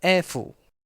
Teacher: is a high tone syllable followed by a low tone syllable so after we say e we need to go much lower